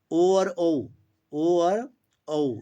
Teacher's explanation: ओ और औ इन दोनों का क्या स्थान है, कंठ और ओष्ठ स्थान है।